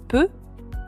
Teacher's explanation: une consonne occlusive comme le « peu » est extrêmement brève car le passage de l'air est momentanément interrompu de manière totale